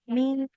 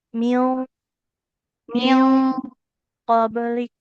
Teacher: kalau dia nun sukunnya ketemu huruf ikhfa yang tebal kayak qof maka ditebalkan juga dengung dari ikhfanya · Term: dengung ikhfa